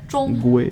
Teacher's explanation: Her name is completely flat. They're all first tone words.